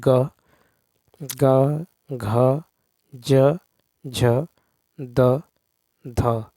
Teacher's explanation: तो ध्वनि की दृष्टि से जिन व्यंजनों वर्णों के उच्चारण में, ठीक है, स्वर तंत्रिका झंकृत होती है उन्हें घोष ध्वनि कहते हैं